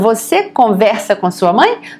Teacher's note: in Portuguese, you have to give it a rising intonation. Otherwise, it becomes a statement, okay?